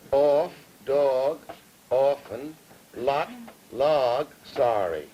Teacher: say off, dog, often with aw vowels and lot, log, sorry with ah vowels. This is typical of the Central Atlantic seaboard.